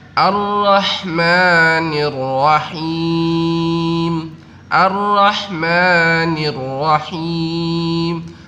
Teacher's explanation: kenapa lamnya nggak dibaca? Ya, ini termasuk adalah alif lam syamsiyah.